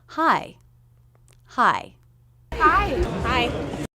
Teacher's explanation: so it has that shape of a stressed syllable hi hi it begins with the h consonant sound and we have the i as in by diphthong again make sure you drop your jaw enough for the first half of that diphthong